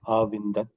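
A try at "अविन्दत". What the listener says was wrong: अविंदम अविंदाव अविंद आ means it looks like dirgha, right? Avindat avindatam avindan vindah, it is a short a. So you say it distinctly, but it looks as though it is dirgha.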